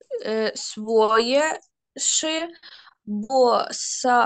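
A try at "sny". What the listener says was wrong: сни, не ши. Стоп, стоп, стоп. Сни, просто си. Ши було б, якби там цо ще не було.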